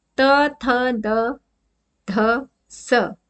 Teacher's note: त जीभ हमारी दांतों के बीच में आती है · इनका उच्चारण अगर आप देखोगे तो त, थ, द, ध, इन चारों को बोलो, स को बोलो, तो इसमें हमारा जो दांत हैं उनका इस्तेमाल होता है, यानी हमारी जो जीभ है वो हमारे दांतों को टच करती है, स्पर्श करती है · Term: दंत्य